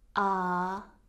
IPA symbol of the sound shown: ɑ: